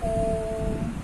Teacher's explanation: प्लुत स्वर को बोलने में तिगुना समय लगता है, मतलब हर दीर्घ स्वर से ज्यादा समय लगता है इनको बोलने में